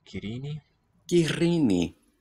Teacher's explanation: Kirini. And the R sounds long, trilled like the Spanish double one, except this one is voiceless